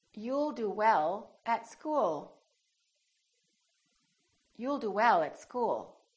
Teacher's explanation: you need to prolong the L, keep it right behind the upper teeth